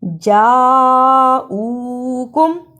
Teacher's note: جاءوکم میں بڑی مد ہے، اسے 4 بند انگلیاں باری باری کھولیں، اتنا لمبا کرنا ہے۔